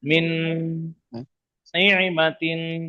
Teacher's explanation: ঈদগামে নুন, নুন সাকিনের পরে নুনে তাসদিদ। তাহলে এই নুন সাকিনটাকে বাদ দিয়ে এই মিম থেকে ডাইরেক্ট নুন তাসদিদ ধরতে হচ্ছে